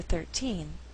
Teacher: it's the last word before a pause in this case we shift the stress to the second syllable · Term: shifting stress